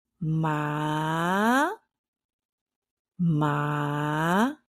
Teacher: the second tone has like this Rising effect I tell my students it's like going up the escalator